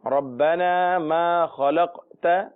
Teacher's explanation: قاف حروف قلقلہ میں سے بھی ہے تو لہذا آواز لوٹے گی